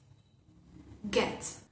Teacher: Es un sonido velar también, lo producimos en la parte posterior de la lengua, elevándola hacia el paladar blando. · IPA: /g/